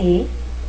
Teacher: el fonema e es una vocal anterior y media